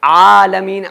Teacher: عین کے اوپر کھڑا زبر بھی ہے اور عین ہے، عین نکلے گی بیچ حلق سے، تو عالمین نہیں کہنا ہے، عالمین کہنے میں الف کی آواز نکلے گی، جبکہ الف نہیں ہے، یہاں پر عین ہے۔